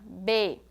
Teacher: tem um som bilabial lábio com lábios se toca